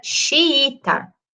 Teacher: Eu pronuncio os dois is. Eu faço uma certa quebra. Ele não é um som contínuo, né? Então, eu tenho uma certa quebra, mas como a gente está falando da mesma vogal, a gente não acentua.